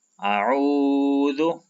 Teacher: تو جب ہم اس کو پڑھتے ہیں جیسے کہ اعوذ، تو آپ غور کریں کہ میں نے عین کی آواز کو کھینچا اور الف اور ذال کی آواز کو میں نے نہیں کھینچا، تو یہ وہ مدہ ہی ہے جس کی وجہ سے ہم عین کی آواز کو کھینچتے ہیں۔ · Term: واو مدہ